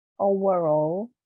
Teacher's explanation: Overall, but we stress all.